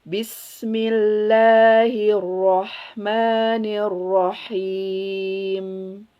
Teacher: Mim, ingat, dia punya dua mahroz di as-safatain dan khoisium. Ketika dia sukun, dia punya sifat tawasud.